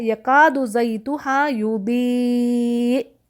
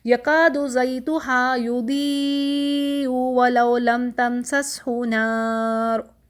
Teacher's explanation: 4 حرکت دینے کے بعد میں نے آخر میں حمزہ کو ساکن کیا اور جھٹکا دیا